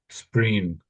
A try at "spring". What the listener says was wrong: Spring. Yeah, all I heard was that bit there. So you missed out the sort of the NG sound.